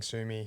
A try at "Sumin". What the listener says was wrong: Sumin with an N.